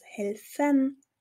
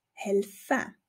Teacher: Oder ganz einfach beim Infinitiv, bei der Grundform von Verben. Hier haben wir immer dieses N, das gelöscht wird, sodass aus helfen, helfe wird.